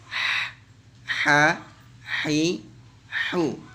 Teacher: Ausat ini tengah-tengah, ha tengah tenggorokan, sehingga ketika kita rasakan ya, pasti tenggorokan kita ini yang bagian tengah akan menyempit rongganya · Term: huruf ha